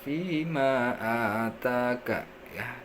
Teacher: maka dibaca panjang ya. Bisa dibaca 2 harokat kalau kita membacanya secara cepat, 4 harokat, atau boleh juga 5 harokat. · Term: mad jaiz munfasil